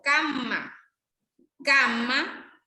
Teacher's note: Aquí miramos que los fonemas nasales están en posición de ataque silábico. La M es nasal bilabial sonora